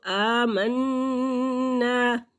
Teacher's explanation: نون مشدد میم مشدد پر غنہ ہوگا